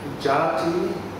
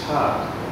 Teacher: So, Jati, pronounced as Cha in Thai. There's apocope there. In other words, the last vowel is dropped off. So the E sounds missing, the Cha.